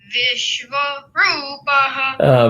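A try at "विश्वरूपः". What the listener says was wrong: V was a little half-baked.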